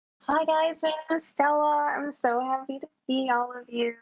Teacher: She kind of talks like very breathy. She has a lot of breath.